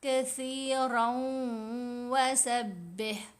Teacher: کثیرن میں جو نون کی آواز ہے وہ مرج ہو جائے گی واو کے اندر ہی. را اور واو دونوں آپس میں مل جائیں گے اور ساتھ ہم غنہ کریں گے. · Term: ادغام